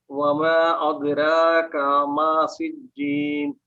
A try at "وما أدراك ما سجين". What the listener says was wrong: دال not ضاد. This وما أدراك not وما أض وما أد